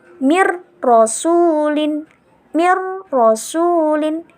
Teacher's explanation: Jadi kita bacanya nun sukunnya nggak usah kita baca langsung masuk ro-nya · Untuk yang selanjutnya, kita akan membahas tata cara membaca idgham, di mana idghamnya idgham bila gunnah, di mana apabila ada nun sukun atau tanwin bertemu dengan salah satu huruf lam dan ro. Jadi, cara membacanya kita nggak perlu dengung, jadi kita langsung masuk ke dalam hurufnya